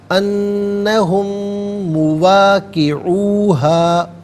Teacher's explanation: میم ساکن کو مواقعو کے میم کے ساتھ ملائیں گے اور غنّے کے ساتھ ادا کیا جائے گا